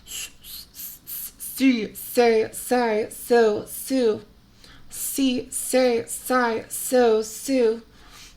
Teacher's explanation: S shift more say say so so say so so so you can hear that s is suddenly much more sharp it really sticks out of the texture a little bit more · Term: sharper consonant